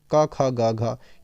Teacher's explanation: ये आपकी कंठ ध्वनियां है। क वर्ग पूरा का पूरा कंठ पे आधारित है।